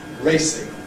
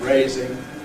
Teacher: we have the clipping of /eɪ/ before the /s/ sound, compared with ‘raising’, where we don’t have such strong clipping before the /z/ sound.